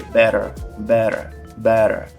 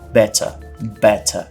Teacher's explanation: a gente tem o t americano que entre duas vogais ele muitas vezes vai ter um som de D ou até mesmo de R